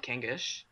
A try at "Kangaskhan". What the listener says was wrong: No, it's Kangas. I know because like it just there's no like in the name I don't see the sh part of it.